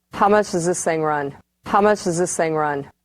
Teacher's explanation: we have strong, weak, strong, weak, strong, weak. So it's possible to cancel the D, TH, and TH.